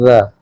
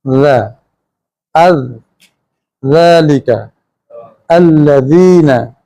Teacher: हम ज़ुबान की नोक दांतों की नोक से लगाते हैं ज़ा, और ज़ुबान नरम रहती है, सीटी या सन्नाटा पैदा नहीं करती।